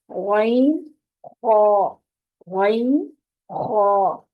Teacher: इब्तदाई हल्फ के दो हरूफ गैन और खा, ये नुक्तों वाले दो हरूफ इब्तदाई हल्फ, ये दोनों हरूफ हल्फ के ऊपर वाले हिस्से से अदा होते हैं, यानी मुंह की तरफ जो हल्फ का हिस्सा है, जुबान के पिछले हिस्से को ऊपर की तरफ बुलंद करते हुए मोटी आवाज से ये दोनों हरूफ मोटी आवाज से पढ़े जाएंगे।